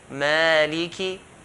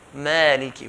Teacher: So here, mad tabi'i, this first, in the first word here, the mim has a fatha followed by an alif. So we're going to stretch it to 2 counts.